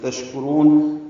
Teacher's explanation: شین ساکن ہے اور اس پہ حمز ہے، تفشی ہے، آواز میں پھیلتی ہے، سانس جاری رہتی ہے ، کاف باریک ہے، را پر ہے، را کو لمبا کریں